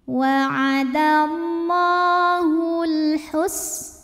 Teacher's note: alif lam menghadapi huruf qamariyah yaitu ha, maka lam sukun dibaca jelas. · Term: alif lam qamariyah